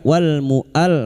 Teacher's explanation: lam takrif yang bertemu mim idhar qamariah